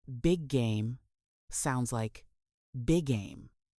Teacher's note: the two consonants are pronounced only once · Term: Linking consonant to consonant